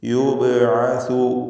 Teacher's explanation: ബഇൻ്റെ സുക്കൂൻ ഖൽഖല സുഗ്റ നൽകി ശബ്ദം ഹറക്കത്ത് പോലെ ചലിപ്പിച്ച് യുബ്അസു എന്ന് വ്യക്തമാക്കി ഉച്ചരിക്കുക.